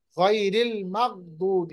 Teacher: गैन की आवाज जो है उसको हमें कलकला नहीं करना। गैरिल मगदूबी, आवाज को रोकिए, कलकला नहीं कीजिए।